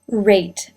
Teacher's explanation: The word that I said is rate, which begins with the R. Note the starting mouth position. Rate. The lips were in a tight circle